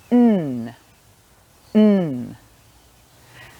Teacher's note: N is a voiced sound, so we use our voice box so you can feel the sound when you make it here. We're pushing air in our mouth, but not out of our mouth. · So we block the air that's coming up through our throat and it forces it up through our nose instead to make the N sound. N. Nurse, nurse.